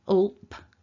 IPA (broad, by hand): lp